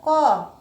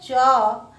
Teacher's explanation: क बोलने के साथ ही अ का भी उच्चारण होता है। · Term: व्यंजन वर्ण